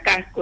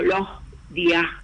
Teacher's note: la S, que se pronuncia de manera imperceptible, no se pronuncia o se aspira. Y eso se nota como en la palabra casco, en el interior de palabras, pero también a veces entre palabras. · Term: S aspirada